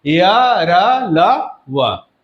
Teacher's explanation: जीभ मुख के किसी भी भाग से स्पर्श नहीं करता है, उसे अंतस्थ व्यंजन कहते हैं।